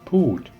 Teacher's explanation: the same long vowel Dead ending falling tone